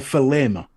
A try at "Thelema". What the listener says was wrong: Thelma. Thelma. Yeah, it's a silent.